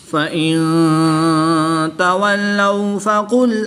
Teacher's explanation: نون ساکن کے بعد تا حرف اخفا میں سے ہے تو یہاں پر اخفا ہوگا، یعنی غنہ زمانی کر کے پڑھیں گے